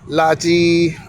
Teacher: The character is La, and the word is Laji. They're both in the first tone.